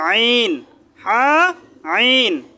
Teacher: গলার মধ্যখান থেকে হা আইন, গলার মধ্যখান থেকে আইন হা আইন।